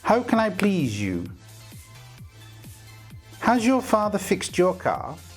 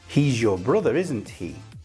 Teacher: The z and the y sound have assimilated to make j.